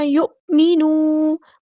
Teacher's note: حمزہ کی آواز جو یہاں پہ حمزہ ساکن ہے تو جھٹکا آئے گا